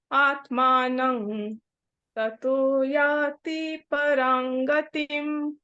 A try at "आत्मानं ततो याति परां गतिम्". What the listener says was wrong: हाँ, याति पे कम रुकना है।